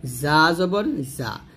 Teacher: ঝা যখন উচ্চারণ করবেন তখন জিব্বাটা নিচের দাঁতে লাগাবেন, জা জবর জা, আর জিম যখন উচ্চারণ করবেন জিব্বার মধ্যখান তার বরাবর উপরে তালুর সঙ্গে লাগে উচ্চারণ করতে হবে, জিম জবর জা, এরকমভাবে উচ্চারণ করতে হবে।